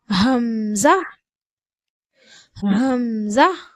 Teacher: தொண்டையினுடைய அடிப்பகுதியிலிருந்து ஹம்ஸா என்ற எழுத்து உச்சரிக்கப்படுகிறது